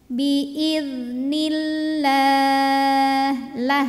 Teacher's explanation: alif lam lewat langsung dari Nun kasrah tekan ke lam karena sebelum lam jalalahnya ini kasrah maka bunyinya tipis ya tidak usah menaikkan pangkal lidah